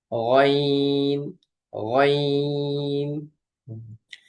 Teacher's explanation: কণ্ঠনালীর শেষ হইতে উচ্চারিত হয় অইন